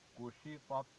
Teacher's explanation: تا جو بغیر نقطوں والی ہے یہ موٹی پڑی جائے گی کیونکہ یہ حروف مستعلیہ میں سے ہے